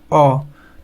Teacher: अ कहाँ से निकलेगा आवाज, कंठ से आपका आता है